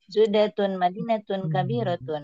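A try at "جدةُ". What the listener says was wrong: Jeddatu sudah ini tidak menerima tanwin.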